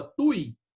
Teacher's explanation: Trissílaba, paroxítona, né? E tem um ditongo ali. O U e o I estão colados, ficam na mesma sílaba.